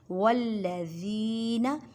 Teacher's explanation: زی کو ایک الف کی مقدار میں کھینچ کر پڑھیں، یا ساکن سے پہلے زیر ہے۔